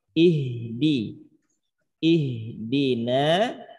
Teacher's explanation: Satu perhatiannya, huruf H mengalir, sifat rokhawahnya.